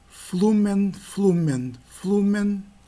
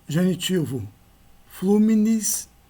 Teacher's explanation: Reparem a mudança na vogal final do tema de E para I.